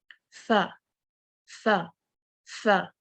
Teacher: तो आपने बहुत ज़ोर नहीं देना, अपने ऊपर वाले दाँतों को नीचे वाले होंठों के साथ बहुत ज़ोर से आपस में नहीं मिलाना। आपने जेंटली इसको इतना दबाना है कि हर्फ अदा हो जाए, लेकिन हम्स के साथ। फ़ा, फ़ा, फ़ा, ठीक है?